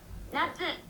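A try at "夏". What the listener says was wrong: Natsu. It's natsu. Questionable pitch accent.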